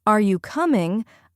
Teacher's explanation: when we ask a question like, Are you coming? Our tone goes up at the end. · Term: intonation